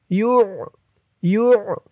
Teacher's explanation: আইনের উচ্চারণটা গলার ভেতর থেকে শক্ত হয়ে বের হবে